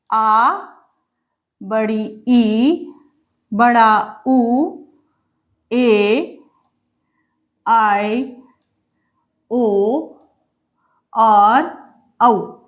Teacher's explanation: दीर्घ स्वर ह्रस्व से दुगुना समय लगे